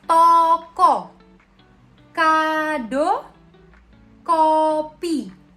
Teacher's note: Vokal O madya atas belakang dengan kondisi bibir semi tertutup.